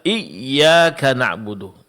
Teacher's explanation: terlalu berlebih-lebihan memberikan tekanan pada makhraj huruf ya, sehingga tekanan itu menyebabkan hilang sebagian dari sifat huruf ya, yaitu sifat rakhawahnya menjadi hilang, berubah menjadi sifat syiddah.